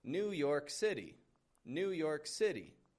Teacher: Instead of stressing the York, I now stress the new.